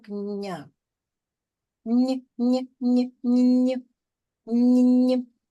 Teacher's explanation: після приголосного нь після приголосного завжди чується А коли стоїть буква Я завжди а приголосний м'який А тут він